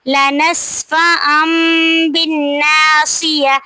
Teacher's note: تنوین کے بعد حروف اقلاب میں سے با آ رہا ہے تو تنوین کی آواز کو میم میں بدل دیں گے